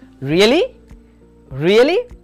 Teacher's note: Then we have a rise fall tone can show surprise or strong feelings.